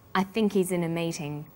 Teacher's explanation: The word think is stressed in this sentence, and he's is unstressed. When these words are linked, the h is dropped.